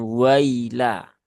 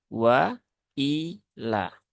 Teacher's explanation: Pastikan hamzahnya tidak terayun, tidak teringankan ya, tetapi dia dibaca dengan jelas atau dibaca dengan tahqiq. Maka hamzahnya harus benar-benar terucap i, bukan i, tapi i.